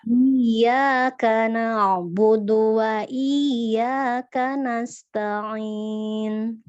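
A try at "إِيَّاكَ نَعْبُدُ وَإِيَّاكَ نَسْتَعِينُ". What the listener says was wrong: Karena tetap ta ya, jangan ikut ke ain, jangan ke bawah huruf lainnya. Kanasta'in. Ta'in.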